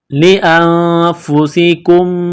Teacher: सीन में सीठी की आवाज पैदा करेंगे सीन को बार करना है ली फस कुम काफ को मीम